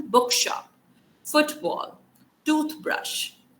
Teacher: इनमें क्या होता है कि जो first part होता है उस particular word का, उस पे normally stress आता है · Now there are certain compound nouns। Stress is on the first component